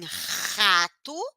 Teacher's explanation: a língua vai lá atrás e raspa a garganta faz força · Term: letra R